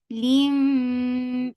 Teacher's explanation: And yes, it is akmal gunna, so you are holding the sound in your nose for a longer time